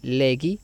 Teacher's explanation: el diptongo ei que se pronuncia como i